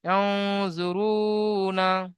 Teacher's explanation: তানবিন নুন সাকিন আওয়াজকে নাকের মধ্যে আওয়াজকে ধরে রাখাকে ইখফা বলে